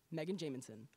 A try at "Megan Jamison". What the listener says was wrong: Forgot a syllable in there, but that's